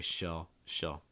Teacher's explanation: using a dark l just kind of raising your tongue a little bit